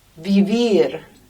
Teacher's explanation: the Spanish V there is almost a B, between a V and a B. In fact, some Spanish speakers can't hear la diferencia entre V and B.